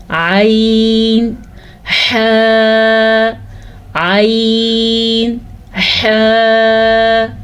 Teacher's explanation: درمیان والا حصے کو کہتے ہیں وسط حلق، جس سے نکلتا ہے عین اور حا